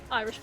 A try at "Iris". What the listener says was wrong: Iris. No H in it. You said Irish. Like 3 times.